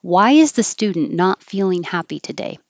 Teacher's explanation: WH questions start high and go low instead of yes, no.